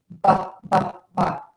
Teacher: My lips go, open and closed, and air puffs out of my mouth. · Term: B sound